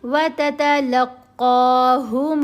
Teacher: قاف کو موٹا پڑھیں گے، اوپر کھڑا زبر ہے، لمبا بھی کریں گے